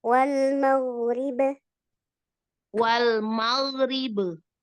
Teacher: Kolkolahnya jangan ada hamzah.